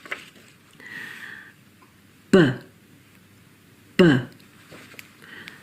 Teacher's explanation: Notice how there's less air being forced through. That's because voiced consonants have a weaker force of exhalation.